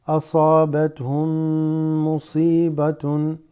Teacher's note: And then the two memes assimilate.